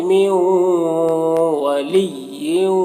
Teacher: یہاں پر نون ساکن کے بعد واو ہے حروف یومن میں سے، تو نون کو واو سے مدغم کر کے غنہ کے ساتھ پڑھیں گے، اس کو ادغام ناقص کہتے ہیں۔